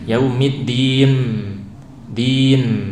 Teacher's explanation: Kemudian sama, jangan imalah, yaumid jelas, din jelas, din ya. Dan jangan terburu-buru menutup bibir, yaumiddin, din, nunnya jelaskan, jangan sampai jadi mim